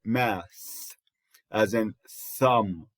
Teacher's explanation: We call it interdental or lingua dental fricative